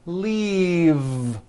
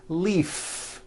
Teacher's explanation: the word is leave with a voiced V keep the voicing going throughout the whole word and voice the